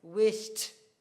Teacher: So if we add ed, because the final sound, the sh, is voiceless, the ed will be t, t, T sound.